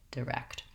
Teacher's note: So watch that both your K and your T sound are there in the word direct. And also the first syllable is lax and short. It has the lax vowel I, direct.